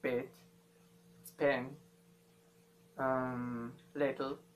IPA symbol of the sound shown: ɪ